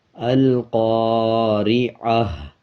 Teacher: جو تا ہے اس کو ہا بنا دیں گے اور ہا کی آدھی آواز آئے گی